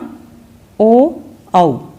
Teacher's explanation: कंठोष्ठ ध्वनियाँ ओ औ, यानी कि कंठ और होंठ दोनों से उच्चारित होती है